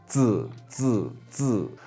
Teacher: your tongue is sort of touching the back of your top teeth as you do it. Zi, zi is sort of blocking the airway, letting a bit of pressure build up, and then zi, letting the air sort of flow out there.